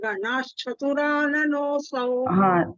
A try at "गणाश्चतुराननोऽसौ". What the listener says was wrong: that is ganacha not ganashcha ganacha ganachaturananosau